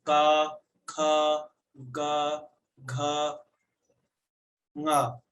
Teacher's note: का वर्ग का उच्चारण स्थान है कंठ। आप इसे गले से बोलेंगे